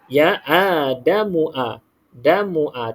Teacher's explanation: Mim ni pendek je, terus masuk terus ke A tu.